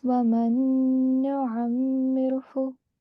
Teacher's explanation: The Yarmalun or the Idgham rule, because noon sakin is followed by another noon. So you have to do a partial nasal sound over here. 2 seconds. Okay?